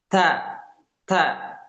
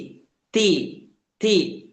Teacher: Jadi ada efek hamesnya ini, ada efek percikan udaranya ini, ya.